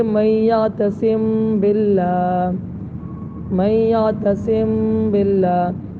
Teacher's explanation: ہونٹوں کے کھلنے سے پہلے ہی دونوں ہونٹوں کے تری کے حصے کو سختی کے ساتھ ملا کر با ادا کیا جائے